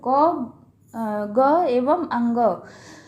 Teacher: अल्प प्राण में जो है वायु की मात्रा कम होती है, और सभी वर्गों के 1, 3, 5 यानी कि क, ग एवं अंग, क वर्ग का जैसे ले लीजिए तो क, ग एवं अंग व वर्ण एवं सभी 11 स्वर आते हैं इसमें।